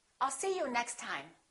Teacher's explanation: We only pronounce one T.